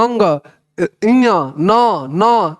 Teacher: ये सब कुछ नाक से बोला जा रहा है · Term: नासिका